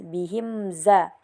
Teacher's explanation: Di sini terdapat juga hukum izhar syafawi karena mim sukun bertemu dengan za jadi dibaca jelas